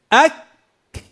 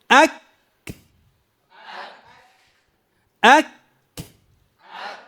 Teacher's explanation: ينحبس الصوت لأنه شديد، ويجري النفس لأنه مهموس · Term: الحرف الشديد المهموس